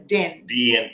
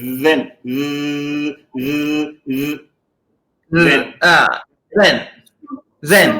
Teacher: there is air going out from between the teeth and the tongue continuously.